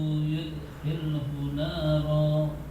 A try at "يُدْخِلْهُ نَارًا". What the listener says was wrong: Semuanya nanti khoknya yang mantap ya. Yudkhilhu. Mantap yang saya maksud bukan ngorok yang berlebihan, ngorok yang lembut. Tapi kalau begini kan yudkhilhu kan enggak jelas mesin itu baca apa tadi? Baca kha, baca ha atau baca apa enggak jelas. Tapi kalau sudah yudkhilhu kan sudah enggak bertanya-tanya lagi yang mendengar. Oh itu tadi huruf kha.